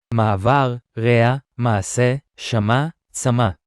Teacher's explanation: the letter (ע / ’ayin) slightly cuts the sound between syllables in the same way as the (א / alèph), but a little less marked · We can clearly hear a slight break in the sound between syllables when the Ayin carries a vowel, but it is not really pronounced when it doesn't.